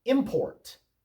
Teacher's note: Import with the accent on the first syllable is a noun